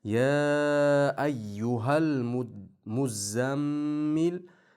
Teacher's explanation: Ya bu 4-5 harakat miqdorida 4 yo 5 harakat miqdorida cho'zishimiz kerak. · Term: mad munfasil